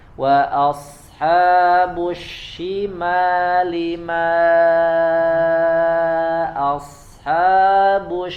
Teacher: suara madnya, suara bacaan panjangnya tidak boleh masuk ke hidung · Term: makhraj al-jauf